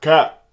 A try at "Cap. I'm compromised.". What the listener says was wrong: Sound like that? Not that deep. It's more like. Cat. It's little. mid. It's mid high. It's mid high.